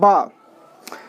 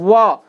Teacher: वकारस्य दंतोष्ठ, लेकिन व ऐसे बोल रहे हैं व, तो व बोलने से हमारे ओठ और दांत दोनों ही इसमें सहयोग कर रहे हैं, तो व का उच्चारण स्थान हो जाएगा दंत प्लस ओष्ठ। · तो ब बोल रहे हैं तो आपस में दोनों होठ छू रहे हैं एक दूसरे को, तो ब का जो उच्चारण स्थान हो जाएगा ओष्ठ हो जाएगा, इस ब का उच्चारण स्थान ओष्ठ हो जाएगा।